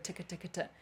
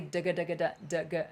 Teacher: The only thing that changes between the two different versions, the t, k, and the d, g, is the d, g is using your vocal folds, vocal cords.